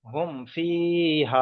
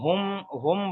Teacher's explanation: ফা এসছে। তাই এখানে এই মিম সাকিনটাকে বিনা গুন্নায় জাহির করে পড়তে হবে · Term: ইজহারে সাফাবি